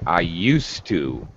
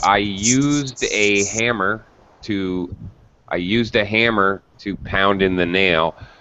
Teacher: It sounds like you don't even hear the D.